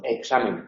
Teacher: Una velar oclusiva sorda en posición implosiva y una alveolar fricativa en posición pretónica o explosiva, en palabras como examen. Esa K, por estar en posición implosiva, tiene un alófono que es como una G pequeñita